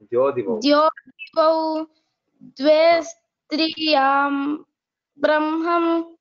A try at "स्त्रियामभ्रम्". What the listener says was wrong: स्त्रियाम् अभ्रम् तत् अभ्रम् न तु ब्रह्मम् स्त्रियामभ्रम्